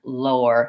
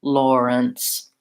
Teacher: the L and the or together lower so I have to start with my tongue behind my teeth to lift up for the L and then I have to pull it back and do the tight or Tom with a rounded mouth for